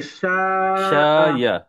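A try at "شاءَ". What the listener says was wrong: না, ইয়া না, হামজা।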